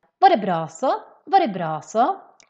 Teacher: Det, we skip the T. Bra, we keep that.